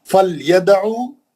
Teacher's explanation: فلیدعو دال پہ خلخلہ صغرا ہے